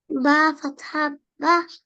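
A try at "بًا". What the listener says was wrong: না, এখানে তো শুধু ফাথা নাই, দুইটা ফাথা আছে, তাহলে হবে ফাথাতেন, বা ফাথাতেন, বান।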